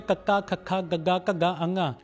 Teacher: ਇਸ ਨੂੰ ਬੋਲਣ ਲੱਗਿਆਂ ਆਵਾਜ਼ ਸਾਡੇ ਕੰਠ ਚੋਂ ਆਉਂਦੀਹ ਇਸ ਕਰਕੇ ਇਸ ਨੂੰ ਕੰਠੀ ਧੁਨਿਆ ਕਿਹਾ ਜਾਂਦਾ ਆ।